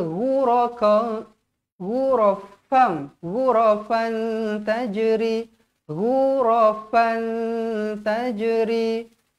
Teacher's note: tanwin bertemu dengan huruf ta ikhfa Hakiki wajib dibaca dengung dua harakat